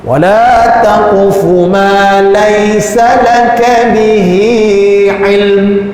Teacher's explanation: tarik sikit huruf mim itu. Tapi idaklah tarik mim itu sehingga jadi dengung